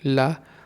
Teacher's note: जिसके उच्चारण में हवा जीभ का पार्श्व बगल से निकल जाए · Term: पार्श्विक